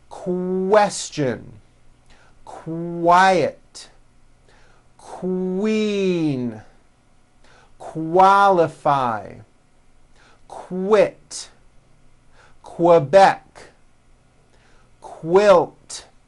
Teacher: q sounds are made with the K sound and the W sound